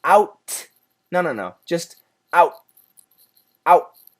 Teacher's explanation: So your tongue is pressing against the alveolar ridge, that little part that sticks out in your upper roof of the mouth. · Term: stop sound